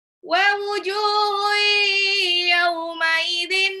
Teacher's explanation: tanwin ketemu ya itu idgham bi gunah